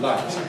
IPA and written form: laɪt (light)